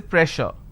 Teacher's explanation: double s will become sh sound so I say pressure